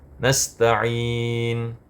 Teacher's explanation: Dan ketika waqaf nasta'in maka menjadi mad arid lis sukun, boleh dibaca 2, 4 atau 6 harakat.